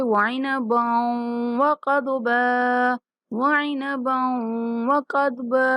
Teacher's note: وعنبا با کو واو کے ساتھ ملاتے ہوئے غنہ کے ساتھ ادا کریں گے